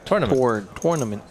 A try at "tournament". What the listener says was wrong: We all pronounce it T-U-R-N. You actually pronounce the U. I know, but you enunciate the tour. Like it's a tour.